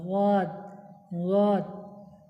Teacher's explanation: জীবের কিনারা এবং তার বরাবর উপরের মাড়ি দাঁতের গোড়ার সাথে লাগে উচ্চারিত হওয়া